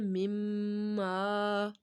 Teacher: میم ساکن جب بھی اس کی تشدید آ جاتی ہے تو اس کو اس کے اوپر غنہ کیا جاتا ہے، ناک میں آواز لے کے جاتے ہیں